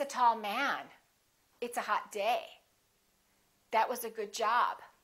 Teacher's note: emphasize the noun, not the adjective